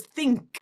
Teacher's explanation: in the spelling it's T-H-I-N-K but that N is actually the NG sound